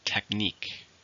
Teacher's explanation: How many syllables are in technique? 2, stress on the second.